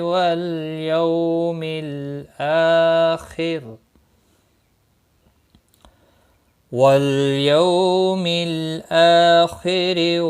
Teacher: واللام ساکن کو ہلانا نہیں، یو واو لین ہے، تھوڑا نرمی کے ساتھ کھینچ کر ادا کریں گے۔